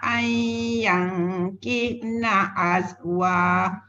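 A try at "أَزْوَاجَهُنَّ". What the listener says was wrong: Jangan berhenti azwa. Sebab kalimah dia azwa jahun.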